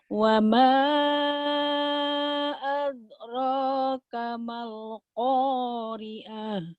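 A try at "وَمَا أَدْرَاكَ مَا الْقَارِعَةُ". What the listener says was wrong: Kol-kolahnya kedah aya. Wa ma wa ma adraka mal qari'ah.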